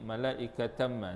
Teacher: Idgham ma'al ghunnah, dengung 2 harakat pada makhraj mim